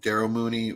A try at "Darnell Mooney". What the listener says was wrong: I am just gonna quickly ask that you add an N to Darnell Mooney's name. Okay, it keeps sounding to me like you're saying Daryl Mooney.